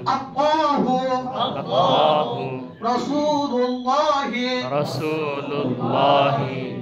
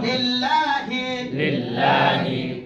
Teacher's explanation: লফজ আল্লাহর লামকে পুর করিয়া পড়িতে হয়